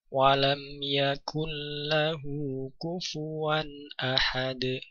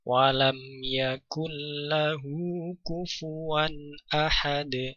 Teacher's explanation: Idgham bila gunnah, jadi suara nun masuk ke dalam lam tanpa gunnah, tanpa dengung.